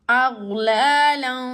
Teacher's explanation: So we will apply the rule of ikhfa here and say aghlalan. We are just hiding the voice of noon